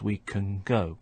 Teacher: the n Sound at the end of the word can is starting to resemble the G sound at the beginning of go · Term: assimilated forms